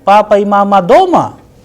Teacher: If I am simply saying if I'm asking a question then mama. So the sound at the end is rising because I'm asking a question. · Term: interrogative